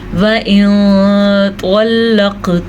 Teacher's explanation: وَإِن طَلَّقْتُمُوهُنَّ وَإِن نون ساکن کے بعد طوا ہے جو کہ حروف اخفاء میں سے ہے، تو ہم نے نون ساکن کی آواز کو چھپے ہوئے غنّے کے ساتھ پڑھا. وَإِن طَلَّقْتُمُوهُنَّ ہاں کے مخرج کا دھیان رکھنا ہے، نون کا غنّہ ادا کرنا ہے کیونکہ نون کے اوپر شد ہے.